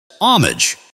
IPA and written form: ˈhɑː.mɪdʒ (Homage)